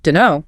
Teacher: The T in don't often just vanishes. So you're left with dunno.